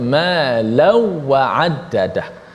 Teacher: adapun Khalaf baca tanpa gunnah, bi ghairi gunnah